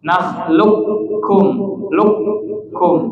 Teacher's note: Jadi enggak mampir ke qaf. Ya, kalau qaf kan makhrajnya pangkal lidah yang nempel di langit-langit lunak. Ya, kalau kaf nempel di langit-langit keras. Jadi langsung ke kaf. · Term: idgham kamil